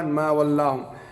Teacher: ما ولاہم میں لام جو ہے باریک پڑھا جائے گا، اس پہ پر نہیں پڑھا جائے گا